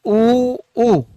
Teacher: ऊ और ऊ का उच्चारण कर रहे हैं तो जीवा का जो पीछे वाला भाग है ना वो क्या हो रहा है साहब, सक्रिय हो रहा है। तो जीवा का जब पीछे वाला भाग सक्रिय होगा तो वो क्या हो जाएगा साहब, पश्चेश्वर हो जाएगा।